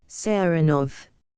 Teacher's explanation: he pronounces the name with the stress on the second syllable